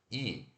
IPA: i